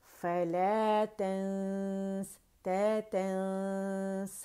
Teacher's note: नून को छुपाते हुए, गुन्ना रिटेन करते हुए, थोड़ी आवाज़ मुँह से निकलेगी, ज़्यादा नाक से निकलेगी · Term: इख्फा